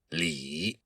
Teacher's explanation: you have to say that I sound with a very low tone. It's the third tone in Mandarin Chinese.